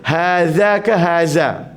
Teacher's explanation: Pastikan hadza, hujung lidah, hujung gigi.